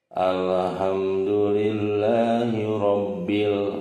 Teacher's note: lamnya dibaca jelas ya sering juga Alif Lam Qomariah ini disebut izhar qamariah karena jelasnya